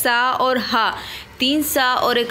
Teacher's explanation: तीन सा और एक हा, ये संघर्षी ऊष्म वर्ण कहलाते हैं